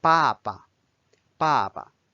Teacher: Notice that when you repeat the character, the second time it is pronounced as the neutral tone (or fifth tone). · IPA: /bàba/